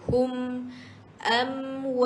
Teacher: Hum simpul dengan mim mati, rapatkan dua bibir.